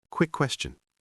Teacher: We often say quick question really fast, almost like one word